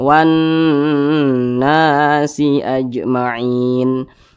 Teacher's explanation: Huruf syamsiyahnya huruf nun. Maka alif lam tidak dibaca, jadi dia dilebur. Ada tapi dianggap tidak ada. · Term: alif lam syamsiyah